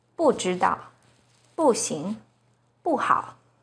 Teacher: When 不 is followed by a non-fourth tone, which are the first, second, and third tones, it's pronounced as the fourth tone